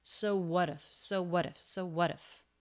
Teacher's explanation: He's linking the two words with a flap T. It comes between two vowels.